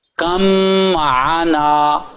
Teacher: با جو ہے وہ ختم ہو گیا، میم میں مدغم ہو گیا